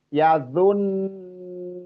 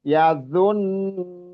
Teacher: Kalau enggak ditahan dan ditekan, enggak nampak dobelnya huruf nun itu. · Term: ghunah musaddadah